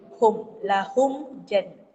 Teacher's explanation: Izhar syafawi. Mulut ni tutup. Izhar. Dia nyatakan bunyi bibir.